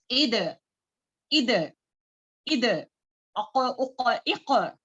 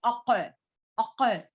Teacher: اق یہ اقصی لسان سے نکلنے والا ہے